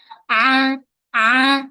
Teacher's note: huruf ain mesti kita kena sempitkan bahagian tengah kerongkong aa jangan A jangan naik suara ke hidung.